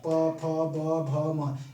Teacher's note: ओठ कहीं ना कहीं सटते हैं, ओठ के सटने के, स्पर्श करने के द्वारा ही इनका उच्चारण होता है, इसलिए इनका उच्चारण स्थान का होता है भाई ओष्ठ होता है। यह ओष्ठ से उच्चारित होते हैं।